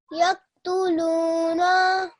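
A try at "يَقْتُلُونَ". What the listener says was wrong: Okay, the noon, what does the noon have on top of it? Fatha. How long should that be then? Yes, and you made it slightly longer than that, which is incorrect.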